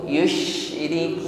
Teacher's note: kuatkan tekanan angin pada huruf syin yang bersukun